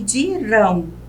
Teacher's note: uma oxítona sílaba mais forte a última